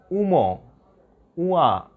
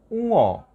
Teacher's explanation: না, এরকম হবে না, এটা হবে উঁ। উ এবং অ এর মিশ্রণ উঁ, কিন্তু একটু নাকে লাগবে।